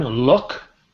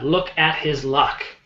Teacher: when we say the word separately, look, the K is very um strong. We have a strong pronunciation, but in the sentence, we soften it a bit.